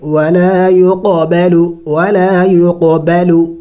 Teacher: قلقلہ کریں گے یعنی ہلا کے پڑھیں گے